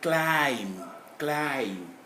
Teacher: B is not even pronounceable, but we stop at M.